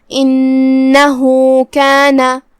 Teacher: کلمت انہو، یہاں الف کے نیچے زیر ہے، ہم حمزہ کو نیچے سے ادا کریں گے. پھر حرف نون ہے اور اس پہ تشدید ہے، 2 حرف کے برابر ہمیں نون کو ادا کرنا ہے. یہاں ہا پہ یہ علامہ ہے الٹا پیش، مطلب یہاں حکم ہے صلہ صغرا، ہم اپنی آواز 2 مد کے برابر لمبی کریں گے.